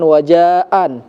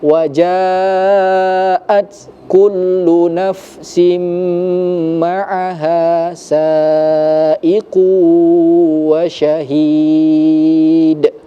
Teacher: Jadi di situ mungkin tidak terlihat bahwa di situ adalah huruf ta'nis yang dia berharokat sukun, artinya dia ada berdesis sedikit